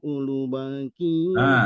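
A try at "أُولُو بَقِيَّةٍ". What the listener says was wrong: Lu-nya panjang. Lu-nya panjang, itu mat tabi'i.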